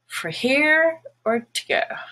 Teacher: the word for also becomes fur when it's not stressed which is most of the time so you go to a